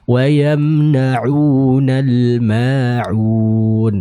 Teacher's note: huruf ain yang keluar dari tenggorokan bagian tengahnya